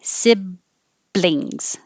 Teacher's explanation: So to avoid an extra sound coming between the B and the L in siblings, if you have an extra sound, it will sound like siblings. So before I release my B sound, I put my tongue in the L position first, and then I open my mouth for the B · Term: BL combination